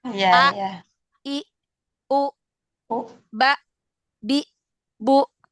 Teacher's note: mereka itu membacanya itu pita suaranya itu ditutup di akhirnya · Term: diakhiri dengan Hamzah